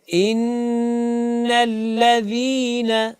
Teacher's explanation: سامعین و ناظرین، یہ پہلا حرف، پہلا کلمہ ان الذین، یہاں پہ چونکہ نون مشدد ہے، اور نون اور میم جب بھی مشدد ہوں، یعنی ان کے اوپر جب بھی شد آ جائے، آپ نے ان کے اندر 2 حرکات کے برابر غنہ کرنا ہے، یعنی آواز کو ناک میں لے جا کر اس کو 2 حرکات تک ناک میں رکھنا ہے